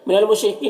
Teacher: را کے نیچے زیر، را کو باریک پڑھیں گے، کی میں یا مدہ ہے، ایک الف کے برابر کھینچیں گے، جیم میں الف مدہ ہے، ایک الف کے برابر کھینچیں گے، را کو پر زبر ہے، را کو پر پڑھیں گے۔